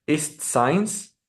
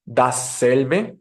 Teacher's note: fricativa también dejará pasar el aire mientras está haciendo fricción alveolar lo está haciendo en el alveolo con la punta de la lengua pero esta ocasión va a ser sorda es decir no requerirá la vibración de las cuerdas vocales Así